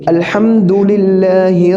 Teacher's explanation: अल्लाह के नाम से पहले ज़ेर है तो अल्लाह का नाम बारिक हो जाएगा